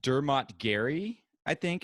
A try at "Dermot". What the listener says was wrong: Dermot. It's not Dermo. Dermot.